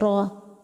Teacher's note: طرف لسان کی پشت اور دانتوں کے مسوڑے، یہ جب ایک دوسرے سے لگ جائے تو اس سے روا نکلتی ہے